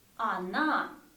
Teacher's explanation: O is not stressed, you see, A is stressed. So when we pronounce in the speech, we don't say O, we say она.